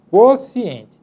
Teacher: o U está sendo pronunciado além da vogal que segue depois do U